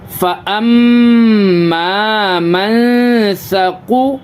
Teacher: یہاں پہ اخفا کریں گے، نون ساکن کے بعد حروف اخفا کے 15 حرفوں میں سے ثا آ رہا، اس کی وجہ سے یہاں پہ اخفا کریں گے، ناک میں آواز چھپائیں گے، نون کی آواز کو ناک میں چھپائیں گے